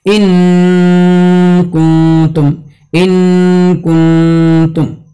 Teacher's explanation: زبان کی نوک کو مخرج اصلی پر مضبوط لگا کر خیشوم سے صوت غنہ کو ظاہر کرنا، جو اخفا نہیں بلکہ اظہار مال غنہ ہو جاتا ہے۔